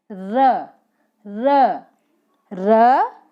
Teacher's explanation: र जो है वो वत्सर्य, लुंठित, सघोष और अल्पप्राण व्यंजन है।